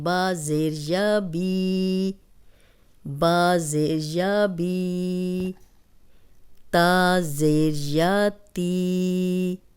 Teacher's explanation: تو یہ یا مدہ بن جائے گا اور 2 حرکات ہم لمبا پڑھیں گے